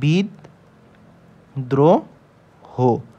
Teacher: ফালা দ এর সাথে র ফালা বিদ্রোহ যদি থাকে তার মানে র ফালা যার সাথে বসবে সে দুইবার উচ্চারণ হবে এবং সাথে র ফালা নিজেই বসবে নিজেই উচ্চারিত হবে যেমন বিদ্রোহ